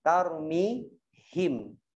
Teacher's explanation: akhir ayatnya atau akhir katanya adalah merapatkan kedua bibir. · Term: Mim sukun